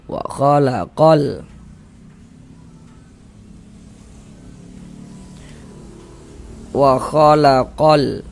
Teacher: Lamnya lam qamariah. Maksudnya dibaca izhar itu huruf lamnya terbaca jelas. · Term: izhar qamariah